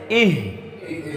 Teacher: शुरू हलक से हमज़ा अदा होता है। तो जब हम इह अदा करेंगे तो यहाँ पर जो शुरू हलक है यहाँ पर जोर देंगे।